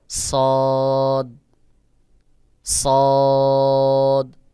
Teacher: সদের আওয়াজ গোল মতো করে উচ্চারণ হবে